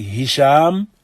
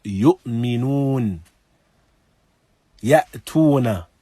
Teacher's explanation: So these two letters originate in the throat. Ha and hamza. That is the deepest part of the throat.